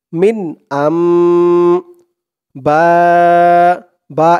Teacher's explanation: হামজা মিম জবর আম বলে গুন্না করতে হবে মিন আম বা এখানে চার আলিফ টান হবে মধ্যে মুত্তাসিল